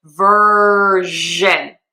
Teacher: Is a voiced sh sound. So sh we've been talking about a lot. You turn your voice box on, turn your throat on, and it's vibrating.